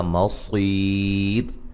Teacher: وقفاً را کو باریک پڑھا جائے گا، مصیر، اور ملانے کی صورت میں را کو موٹا ادا کریں گے، جب ملا کے پڑھیں گے پھر یہ اس کو ایک الف سے زیادہ لمبا نہیں کریں گے۔